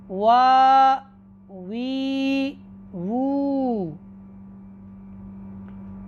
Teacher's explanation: दोनों होंठों को ना तमाम मिलाने से ये वाव गैर मद्दा का मखरज है